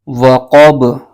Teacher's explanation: یہ با حروف قلقلہ میں سے بھی ہے اور اس میں قلقلہ بھی ظاہر ہوگا